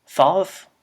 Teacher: a sound that is known as the voiceless dental fricative. In English, this corresponds to the th in words such as throw, thrash, or thing.